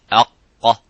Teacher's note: As soon as you say, make the sukun and make that sound of aq, you can see how the sound is cut. There is no air coming out, and it's a full mouth. It's not an empty mouth. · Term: qaf